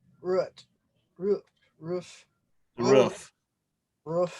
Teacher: My Wisconsin cousins pronounce roof with the same vowel sound as the word foot.